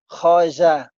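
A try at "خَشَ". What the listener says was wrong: Khosya. Ini shin.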